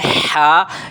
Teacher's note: ہا بھی حلق کے درمیانی حصے سے ادا ہوتی ہے۔ یہ آپ دیکھ رہے ہیں، یہاں سے ہا ادا ہوگی۔